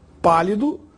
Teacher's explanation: a palavra pálido tem a sílaba mais forte na antepenúltima sílaba, pá. Portanto, é uma proparoxítona.